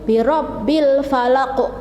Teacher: hurufnya yaitu berupa qaf yang di kasroh, tetapi membacanya itu disukun dan dipantulkan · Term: qalqalah